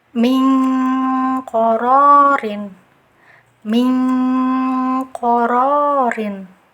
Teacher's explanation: karena saking jauhnya makhraj nun dengan qaf, nah jadi dia bunyinya seperti eng ya